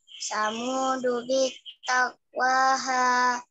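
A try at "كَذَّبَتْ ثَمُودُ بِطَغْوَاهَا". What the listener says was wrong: Ini enggak panjang.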